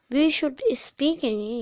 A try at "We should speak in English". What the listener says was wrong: स्पीक नहीं, जोर नहीं देना स्पीक पे. We should speak in English.